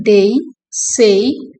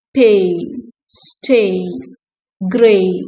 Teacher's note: it begins in the mid front vowel and glides to a high front vowel, producing a smooth transition.